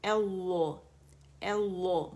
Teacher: اسم الجلالہ سے پہلے ہمارے پاس فتحہ ہے، اس وجہ سے ہم نے اللہ اللہ موٹا پڑھنا ہے